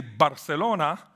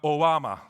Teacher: Barcelona is with a b, but Obama is with a w.